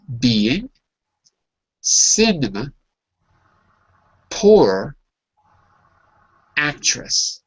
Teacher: when you have an R, the British don't pronounce it, and we do.